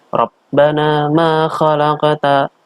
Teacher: bacaan Qolqolah Sugro artinya dipantulkan secara kecil enggak gede karena ini ditengah